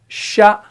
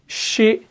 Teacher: इसके मखरज में आवाज फैल जाती है, तब जाके हरफ शीन अदा हो जाता है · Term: सिफत तफशी